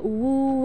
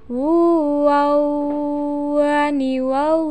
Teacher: lebih sempurna pengucapannya ketika suara kita keluar dari rongga hidung